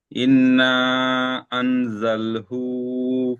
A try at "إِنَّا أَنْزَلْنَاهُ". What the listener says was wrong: আনজালনা, না ছেড়ে যাচ্ছে। আনজালনাহু। হামজা নুন জের ইন, নুনের উপরে তাসদিদ আছে, নুন তাসদিদকে একালি পরিমাণ গুণনা করতে হবে।